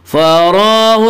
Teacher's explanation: را کے اوپر کھڑا زبر ہے، کھڑا زبر کو ایک الف کے برابر کھینچ کر پڑھیں گے